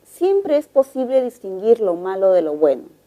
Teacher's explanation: como observamos el tono es descendente